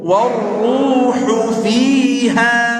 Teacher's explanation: Warru, enggak. Warru, enggak perlu tarik bibir pada huruf ro, langsung, karena dia dhammah tebal.